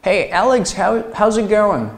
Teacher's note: 细心同学会发现啊，这个 t 是不是不见了？